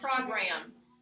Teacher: Let's move the accent to the second syllable.